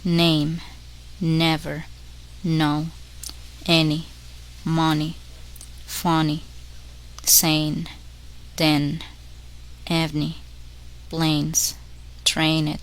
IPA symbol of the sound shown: n